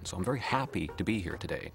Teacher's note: most Americans, they go up early in the sentence, stress-wise, and then they come down hard at the end